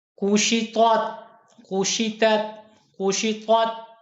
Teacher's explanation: طا موٹی ہے، تا باریک ہے